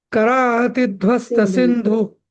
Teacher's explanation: आता इथ ना धू हा रस्व आहे ना तो लांबवायचा नाही